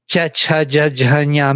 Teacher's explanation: middle tongue going to the hard palate